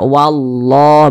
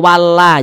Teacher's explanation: dengan lafaz Allah kita perhatikan huruf sebelumnya ada lafaz Allah sebelumnya ada huruf yang memiliki tanda baca fathah maka lafaz Allah dibaca tebal maka ini dibaca wallah begitu Jangan dibaca walla jangan tetapi dibaca